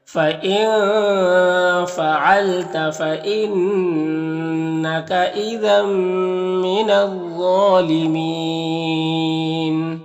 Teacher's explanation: وقف کی صورت میں مد عارض وقفی ہوگا